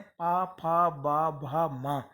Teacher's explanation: इनको बोलते समय हमारे ओष्ठ जो ओंठ हैं दोनों आपस में टकराते हैं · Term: ओष्ठ वर्ण